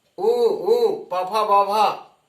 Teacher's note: ओष्ठ्य वर्ण भी कहते हैं, क्योंकि ये ओष्ठ से बोले जाते हैं